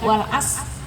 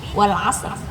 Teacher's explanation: Bukan wal as, tidak, tapi wal asr. Ada ro-nya, tapi dimatikan. · Pokoknya ro-nya harus ada. Kita harus sadar sendiri bahwa kita menyebutkan ro-nya, jangan meniadakan ro-nya.